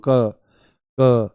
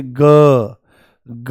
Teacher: जैसे क जो है ये अघोष है और ग जो है ये सघोष है · तो ये वाला जो हिस्सा है, ये यहां पर जो है, इस पे हाथ लगाओ आप और बोलो, देखो हल्का सा बोलो क क क, नॉर्मल बोलो क क। तो आपको कोई वाइब्रेशन यहां पर महसूस नहीं होगी, परंतु जैसे ही आप बोलोगे ग ग, पूरा झंझना जाता है